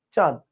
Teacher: চন্দ্রবিন্দু দিলে কি হবে? সামান্য নাকের দোতনা আসবে, চাঁদ হালকা।